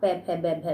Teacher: पवर्ग का पै फै बै भै में, तो दोनों होठ एक दूसरे का स्पर्श करते हैं